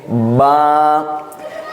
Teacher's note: दोनों होठ मिलाएंगे। दोनों होठों को दबाएंगे सादी जुबान में।